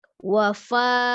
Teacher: pengucapan huruf fa antara 2 bibir seperti meniup ya